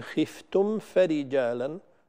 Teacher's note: البعض يخفي الميم عند الفاء خطأ وهي واجبة الإظهار هنا، بل كما قلت هنا ينبه وينتبه أكثر إليها لاتحاد مخرج الميم والفاء، فهما يخرجان من الشفتين كما بينا ذلك في مخارج الحروف.